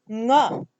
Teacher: So ka belongs to the gutturals, and the soft nasal that belongs to the gutturals is nga